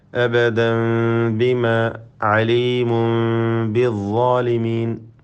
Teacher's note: അബദൻ ബിമ, അതുപോലെ അലീമുൻ ബിദ്ദാലിമീൻ, ഈ 2 പദത്തിലും തൻവീനിനെ സുക്കൂനുള്ള മീമാക്കി മാറ്റി മണിക്കണം. ഇതിനാണ് ഇഖ്ലാബ് എന്ന് പറയുക. · സാക്കിനായ മീമിന് നൽകുന്നതായ വിധി ഇഖ്ഫാ ഷഫവി അവ്യക്തമാക്കി മണിക്കുക